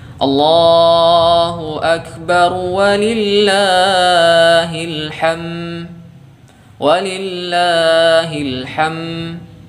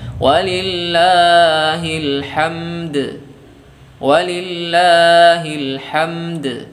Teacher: Ya, ini juga keliru ya. Harusnya ada huruf dal yang kita qalqalahkan.